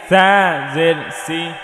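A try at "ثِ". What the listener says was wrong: সি না, এটা থি হবে। জিব্বার আগা সামনের ওপরের দুই দাঁতের আগায় লাগিয়ে থা, নরম থা, থা জের থি,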